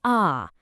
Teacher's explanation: It's not the tight ah like in the word cat. It's a big, open sound, like when you're at the doctor's office and they tell you to say ah. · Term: the final ah